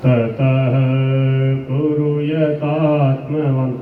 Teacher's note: ऐसे बोलोगे, अगर ऐसे बोल दिया ततः कुरु यता, पूरा गलत हो गया। कुरु छोटा है, दोनों में ह्रस्व उकार है। ततः यहाँ पर पूरा रुक जाएंगे।